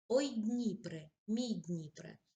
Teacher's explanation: звертання вимовляємо високим тоном особливо на початку речення перед звертанням паузи звичайно немає а пауза як правило для нього